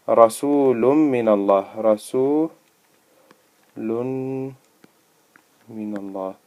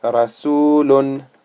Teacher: Idghaam. The N sound merges into the letter that comes after it.